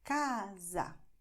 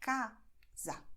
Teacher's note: my mouth is very open, wide in ca, but then I close it a little bit to say za. Casa. It's the same letter, A, but it's open and then it's closed.